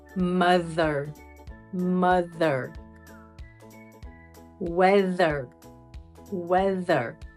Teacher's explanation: the hard th sound is voiced meaning we use the vocal cords